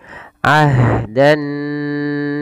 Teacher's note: nah ini hamasnya juga lembut ya harus kalau bisa ah dan dia punya sifat namanya rakwah mengalir suaranya